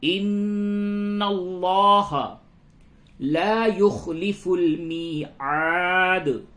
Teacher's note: نون مشدد ہے، غنہ ہوگا، اور لام کو پر کیجئے